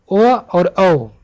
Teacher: ये दोनों का उच्चारण स्थान कंठ और ओष्ठ के सहयोग से होता है